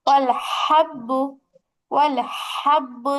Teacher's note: কণ্ঠটাকে একটু চাপাইতে হবে। হাঁসের মতো একটা ফ্যাসফেসে আওয়াজ আসবে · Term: বড় হা